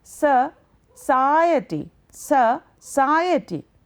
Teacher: Now, this is the second syllable because in society there are 4 syllables. It is the second syllable that carries a stress.